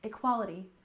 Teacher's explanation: equality we stressed the second syllable